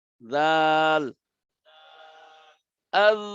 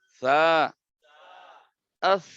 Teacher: জাল বাতাস ছাড়া, আর সা বাতাস সহ।